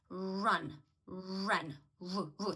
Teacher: не тільки працює язик а трішечки змикаються губи